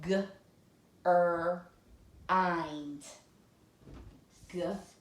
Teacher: The vowel says its own name. It is not short like all the other closed syllables. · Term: closed syllable exception